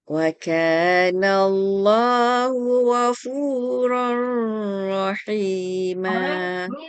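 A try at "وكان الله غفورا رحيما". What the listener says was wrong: Ini tanwin bertemu ra ni hukumnya idgham bila gunnah kak. Jangan ada bayangan dengung pun. Wa kana Allahu ghafurar rahima.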